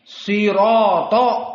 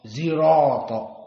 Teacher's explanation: Maka Arab tidak bisa menyebutkan kalimat sirato, tetapi zirato.